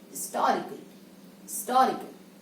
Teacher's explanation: the word is beginning with h and it is accented on the second syllable